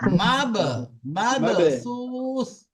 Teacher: আমরা পড়েছি কলকলা, পড়েছি কলকলার মধ্যে যে 5টি অক্ষর আছে কফ ত বা জিম দাল, তার মধ্যে বা আছে। তো বার উপরে এখানে সাকিন এসছে, তাহলে বাটাকে কলকলা করতে হবে।